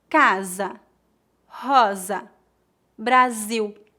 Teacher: Entre duas vogais, o S tem som de Z.